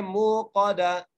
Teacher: ٹھیک ہے, ہا کو صحیح ادا کرنا ہے اور اس کے بعد موقدا, منہ کو کھینچ کر پڑھنا ہے کیونکہ یہاں پر وہ مدہ آ گئی ہے, وہ ساکن سے پہلے پیش ہے اس لیے کھینچ کے پڑھیں گے. موقدا, قاف کو موٹا کر کے اور دال کو آگے ملانا ہے